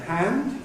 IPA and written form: hænd (hand)